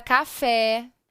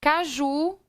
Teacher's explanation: é mais forte na última, recebe o nome de oxítona.